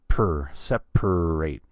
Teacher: word there's an A and the way the word is spelled there's an a between the p and the r but we don't say an a there we just say per separate